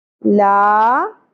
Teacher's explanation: لا مد اصلی ایک الف کے برابر کھینچنا ہے